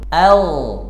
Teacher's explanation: huruf gain saat sukun suaranya itu ngalir bukan mantul a bukan AG karena huruf ini punya sifat rakhawah bukan Qalqalah